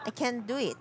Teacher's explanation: I said can't, but I didn't pronounce the T.